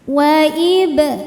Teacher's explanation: Huruf ba sukun hukumnya qalqalah sughra karena ba sukunnya sukun asli dan ada di tengah bacaan. Cara bacanya memantul dengan pantulan yang kecil.